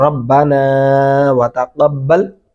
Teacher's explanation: نون کو لمبا کریں گے، کھینچ کے پڑھیں گے